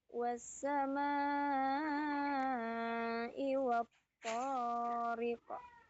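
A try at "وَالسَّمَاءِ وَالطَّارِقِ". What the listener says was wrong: No, toriqo. Nah, terlalu cepat. Toriqo. Kembali ke mahrujul huruf ko. Di mana mahrujul huruf ko? Nah, dekat-dekat kho ya dia kho sama kaf itu dekat dia di pangkal tenggorokan nih di dekat apa ya kalau kita itu kalau kita bercermin itu ada kayak kayak anak lidah itu. di bawahnya dikit ya. Nah, itu kembali lagi ke sana. Ko. Makanya jangan terlalu baca ko-nya terlalu berlebihan. Ko, qi, ku.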